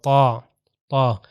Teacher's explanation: کا یہاں سے تلفظ اور طا کا ہم نے کیا کہا اوپر والے دانتوں کے پیچھے زبان لگے گی اوپر کی طرح اور موٹا ہوگا